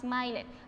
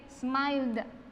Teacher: si es sonoro, la ed se va a pronunciar como una da. Explico, yo no voy a decir smiled, yo no digo jamás smiled, aun cuando yo vea la E es muda, es omitida.